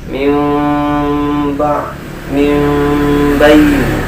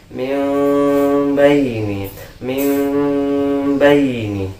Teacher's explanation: Harus merubah nun sukun atau tanwin menjadi mim. Jadi ini ba-nya ini, nun sukunnya ini seolah-olah menjadi mim ya. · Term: iqlab